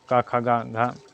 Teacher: इन व्यंजनों का उच्चारण करते समय जीहा का पिछला भाग तालु का स्पर्श करते हैं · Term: कंठ व्यंजन